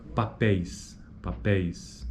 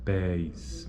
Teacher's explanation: Veja que ocorre o encontro vocálico, né? E e I. Mas a proeminência acentual é no E, na primeira vogal. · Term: ditongo decrescente